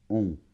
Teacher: on n'entend pas la lettre N puisque les deux lettres forment un son donc c'est bon très · C'est un peu comme un O, mais ça vibre plus vers le nez. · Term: la voyelle nasale on